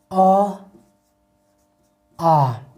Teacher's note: अ और आ का उच्चारण जो है कंठ से होता है